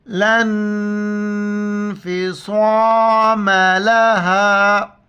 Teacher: اور صاد موٹی الفاظ میں سے ہم موٹا کر کے پڑھیں گے